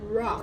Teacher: So, for example, in the word rock, notice how my lips are moving forward and my tongue moves back in my mouth and I push out the R sound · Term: American R sound